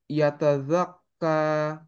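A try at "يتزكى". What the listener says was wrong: জাক্কা। জায়ের মাখরাজটা একটু অফ হচ্ছে, হ্যাঁ। না, এইটাই ভুল হচ্ছে, যে দাল হয়ে যাচ্ছে, এটা জা। জায়ের মাখরাজটা হচ্ছে সিনের মাখরাজে। দুই নিচের যে ইনসিসার্স গুলো, সেই ইনসিসার্স এর মাঝের পার্টে থাকবে টাংটা। ওকে, টাঙের টিকটা। ওকে, এন্ড বাজিং সাউন্ডটা হবে তো জা, জা।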